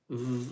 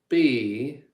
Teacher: You got to put your teeth on your lower lip V and vibrate. V. Because if you just say B, that's a different letter of the alphabet, isn't it?